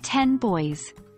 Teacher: at more examples say the phrase 10 boys here the N at the end of 10 is a nasal sound and it influences the B and boys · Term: Progressive assimilation